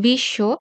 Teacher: যে বর্ণের সাথে ব ফলা থাকবে সেই বর্ণটার ২ বার উচ্চারণ হবে। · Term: উচ্চারণ দ্বিত্ব